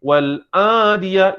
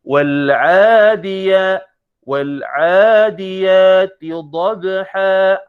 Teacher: Dia kena ain. Ain ini makhrajnya di tengah-tengah halqum, tengah. Jadi bunyi wal-adiyah, tutup hidung.